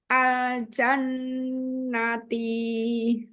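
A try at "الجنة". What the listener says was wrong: Ti-nya jangan panjang.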